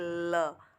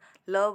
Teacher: जिस वर्ण के उच्चारण में मुख के मध्य भाग में दो अवयवों मिलकर वायु अवरुद्ध कर देते हैं किंतु हवा दोनों पार्श्वों से होकर निकल जाती है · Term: पार्श्विक व्यंजन